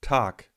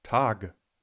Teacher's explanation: Durch die Auslautverhärtung schreiben wir zwar <g>, sprechen aber eigentlich [k]